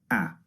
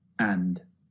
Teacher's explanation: a is the first sound it's quite long a a and the second sound ah is very very short it comes out in a very short burst